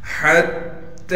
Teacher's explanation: ہا کو تا سے ملا دیں گے اس لیے کہ تا پر تشدید ہے، ہا تا زبر حت، اور تا پر کڑا زبر ہونے کی وجہ سے ایک الف کی مقدار کھینچیں گے، تا کڑا زبر تا، یہ بن گیا حتی۔ · یا کو بغیر کھینچے پڑھنا ہے، لام پر کڑا زبر ہونے کی وجہ سے لام کو ایک الف کی مقدار کھینچیں گے